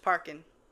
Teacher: I never really say the G on any type of like ing words. It's just parking.